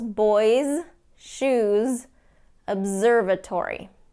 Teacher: s has more of a light Z sound when the s follows a vowel or when the s follows a voiced consonant